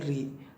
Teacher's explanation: री में जीभ का अगला भाग काम करता है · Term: मूर्धा